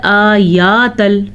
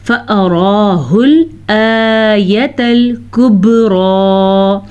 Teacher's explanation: नहीं, हमज़ा के ऊपर खड़ी ज़बर तो अदा करेंगे, लेकिन या के ऊपर बड़ी ज़बर है तो या को लंबा नहीं करेंगे